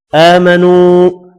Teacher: ایہا الذین، ذی یا مدہ ہے، اس کو 1 الف کی مقدار میں کھینچ کر پڑھنا ہے۔ آمنو، کھڑی زبر کو 1 الف کی مقدار میں کھینچ کر پڑھیں گے